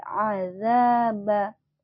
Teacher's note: bacanya harus dengungkan dulu [Musik] innaabaaba Ain bukan adaba tapi adaba a yang keluar dari tenggorokan ya